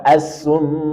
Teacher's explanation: adalah pantulan baik perhatikan kasus asumu mim bertasdid maka gunahad dad maka kita berikan sifat gunah yang agak lama dengungnya · kita berikan sifat gunnah yang agak lama dengungnya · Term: gunnah musyaddadah